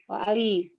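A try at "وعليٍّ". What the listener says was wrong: aliyin kan tanwin.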